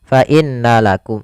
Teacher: Maka di sini kita tasydidkan nunnya dan ditahan suara dengungannya atau suara gunnahnya. Gunnah itu memasukkan suaranya ke rongga hidung.